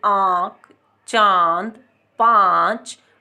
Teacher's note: नाक और मुंह, यानी दोनों में से ही हवा निकलती है, नाक से भी और मुंह से भी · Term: अनुनासिक